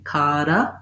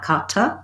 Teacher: these two t's uh are go together like a d sound or a flap t kara not kata but